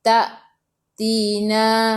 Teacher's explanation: Ma 2 harakat ada alif mad asli, ta tina. Hamzah ada sukun, kena baca dengan putus, kena baca dengan tahan nafas.